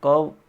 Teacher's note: क वर्ण का उच्चारण स्थान है कंठ